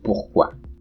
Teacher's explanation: In French and German, you have this other trill, the uvular trill.